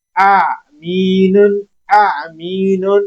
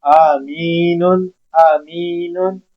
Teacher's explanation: जब हम आइन अदा करेंगे तो हमारी एक हलक के दरमियान से आवाज ब्रेक हो जाती है, हलक के दरमियान से आवाज आती है आमीनुन, आमीनुन, तो इसका मतलब रिहाइशगाह होता है।